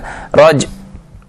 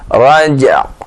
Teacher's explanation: Tempelkan makhraj ain, ya, sebelum kita waqaf, sebelum kita mengakhiri waqafnya.